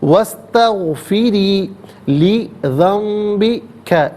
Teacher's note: استغفری میں را کے نیچے زیر را کو باریک کر کے پڑھیں گے